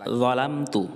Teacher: য জিহ্বার আগা সামনের উপরের দাঁতের আগার সঙ্গে লাগবে